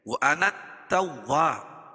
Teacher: جب ہم اس کو وَأَنَا کو التواب کے ساتھ ملا کے پڑھیں گے تو یہ الف جو ہے حذف ہو جائے گی، یعنی گر جائے گی۔